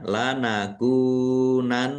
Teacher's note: Nun tasdid dibaca ghunah atau mendengung ditahan biar tampak mendengungnya